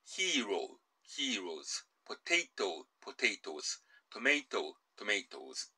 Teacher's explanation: ES▁をつけて、ズって読むんですね。 Hero,▁heroes,▁potato,▁potatoes,▁tomato,▁tomatoes▁となります。これ実は、もともとの単数形が、O▁で終わっていますけれども、この▁O▁が長音の読み方、O▁なんですね。で、もしここに▁S▁だけをつけてしまうと、この▁O▁の文字が単音の読み方に変わってしまうんですね。それを避けて、長音の読みを保つために▁ES▁を綴って、O's▁とするわけです。それから、S、もしくは▁FE▁で終わる名詞と